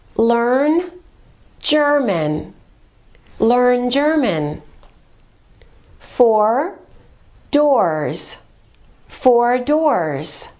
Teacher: when the R is before another consonant, the R must be pronounced in American English.